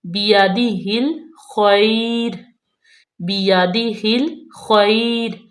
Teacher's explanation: با کے نیچے زیر، یا زبر، تا زیر دی، بیادی ہل، ہا کو لام میں ملائیں گے بالکل نرمی سے اور باریکی سے